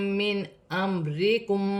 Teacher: نون ساکن کے بعد حمزہ ہے تو نون ساکن میں غنہ نہیں ہوگا